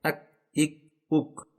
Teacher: مخرج نمبر 5، کاف کا مخرج۔ اس حرف کی ادائیگی کے لیے زبان کی جڑ کو تالو کے سخت حصے سے لگانا ہوتا ہے۔